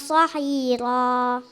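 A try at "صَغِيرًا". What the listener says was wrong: Jadi ada makhrajnya yang agak kurang, bukan sohiro, tapi sohiro. Ya, tadi itu yang Ustaz dengar agak kurang tepat penyebutan ghinnya, ya, lebih kepada kho gitu.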